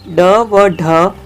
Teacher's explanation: ऐसे व्यंजन जिनके उच्चारण में जीभ का आगे वाला भाग झटके से नीचे की ओर आता है वे उत्क्षिप्त व्यंजन होते हैं ड व ढ उत्क्षिप्त वर्ण है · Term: उत्सिप्त